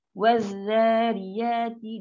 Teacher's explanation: Lam ni kena masuk kat zal. So bila lam masuk kat zal, bunyi dia wazariyati.